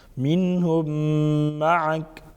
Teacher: منهم نون ساکن کا اظہار ہوگا کیونکہ آگے حروف حلقیوں میں سے ہاں ہے